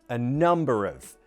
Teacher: And the stress is on Nu.